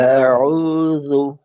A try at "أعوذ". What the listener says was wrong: হ্যাঁ, হামজাকে আরো শক্ত করে। আউযু। দেখেন, হামজার দুইটা অবস্থা হামজা উচ্চারণের, একটাকে বলা হয় তাহকিক, আরেকটাকে বলা হয় তাসহিল। তাসহিল মানে হলো সহজভাবে বা শিথিলতার সাথে।